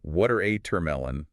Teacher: It's got three syllables. Needs a clean rhythm. Make sure the stress is right up front. Water amelon, not watermelon.